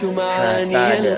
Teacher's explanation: Kebacaannya dipantulkan secara lebih tebal. Dia termasuk qalqalah kubra.